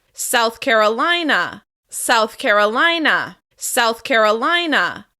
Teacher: we're stressing the third syllable of the second word.